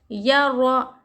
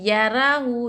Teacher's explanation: یہاں زبر ہے موٹا پڑھیں گے، یا رو، بہت سے لوگ ایسا پڑھتے ہیں یا را ہو، یا را باریک کر دیتے، را کے اوپر حرکت زبر پیش رہا تو را کو ہم کو موٹا پڑھنا چاہیے، باریک نہ پڑھنا چاہیے، یا رو، ہا الٹا پیش ہو، یا رو ہو، واو زبر و، میم یا زبر مئی، و مئی. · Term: را موٹی